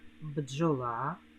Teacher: слові бджоли шість букв і п'ять звуків букв більше тому що букви д і ж позначають один звук